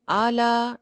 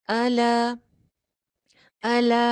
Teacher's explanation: हमजा के ऊपर सिर्फ जबर है ना तो जबर की आवाज बहुत छोटी रखनी है